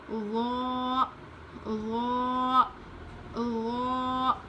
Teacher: زبان کی نوک اوپر کے دانت میں لگا کر پڑھیں گے، وہ میں بھی ہلکی آواز آئے گی